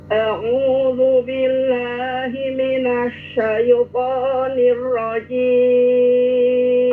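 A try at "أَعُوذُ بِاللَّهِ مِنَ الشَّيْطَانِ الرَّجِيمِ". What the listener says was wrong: Rnya kurang dikit. Getar.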